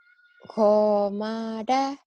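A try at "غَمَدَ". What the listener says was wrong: Gak ada yang panjang.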